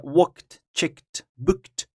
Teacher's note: They pronounce as t, not id.